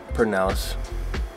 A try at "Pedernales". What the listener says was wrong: There's not a silent R. There's not a silent R. There's not an R or a silent R. There's none of it.